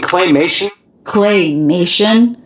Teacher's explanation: you sort of stress in clay clay even though the most stress syllable is May